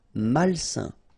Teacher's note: A-I-N together, it's a nasal and it's un.